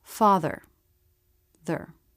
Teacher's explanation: That means when you have a syllable with a schwa followed by one of these consonants, you don't need to make the schwa. it gets absorbed by the next sound. · Just go from the TH sound right into the R sound without trying to make a separate schwa. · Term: syllabic consonants